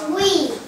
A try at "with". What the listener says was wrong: Chữ cuối còn phát âm à? Tờ thì là âm thở, âm tờ. Không đọc nặng thế đâu.